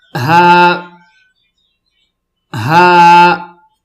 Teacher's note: बीच में सांस की आवाज नहीं होगी